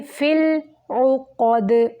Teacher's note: عین وسط حلق سے اور قاف موٹا پڑھیں گے، دال کو کلکلا کریں گے رکتے ہوئے